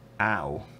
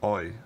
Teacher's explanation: Southeastern British English has ow as its mouth vowel and then Irish English or Northern Irish English has something like oi